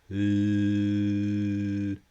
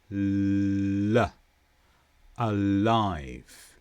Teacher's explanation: To make the l sound, your tongue touches above your top teeth and some air gets through. L. And then release.